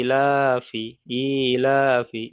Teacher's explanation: ই যেমন টান হবে লা তেমন টান হবে, আর ফা টান হবে না।